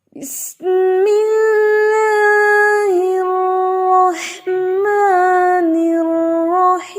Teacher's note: کوشش یہ کرنی ہے کہ دونوں کا ہا جو ہے وہ حلق کے درمیان سے ادا ہو · اور ایک چیز کا اور خیال رکھیں آپ کہ می کی آواز آئے، میں کی آواز نہ آئے